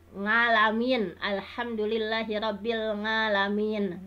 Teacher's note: misalnya a yang seharusnya dari halki itu malah jadi nga gitu